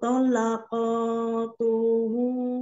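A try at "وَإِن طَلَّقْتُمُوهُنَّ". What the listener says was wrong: Jangan dipanjang, jangan dipanjang stopnya.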